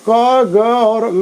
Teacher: तो इस तरीके से क ग और अंगा जो है ये अल्प प्राण है, जिसमें प्राण वायु बहुत कम मात्रा में खर्च होती है बोलते समय, उसको अल्प प्राण कहा जाता है।